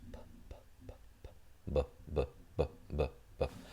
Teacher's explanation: Y es un sonido oclusivo b, y es un sonido sonoro. Sonoro porque vibran las cuerdas vocales.